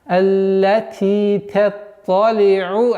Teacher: у нас айн и следующее айн. Нужно разделять между ними максимально, чтобы не происходила ассимиляция, идгама не было.